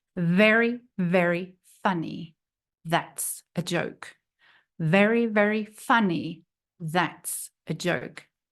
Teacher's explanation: the th is made by putting your tongue forward between your teeth